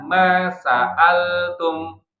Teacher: lam itu punya sifat bainiyah. Bainiyah itu suaranya sedikit mengalir.